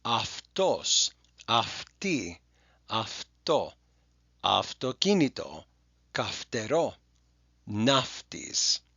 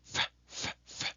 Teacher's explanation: we're just taking our lower lip and putting it up against our upper row of teeth. It's called an unvoiced dental fricative. F, f, f. Okay?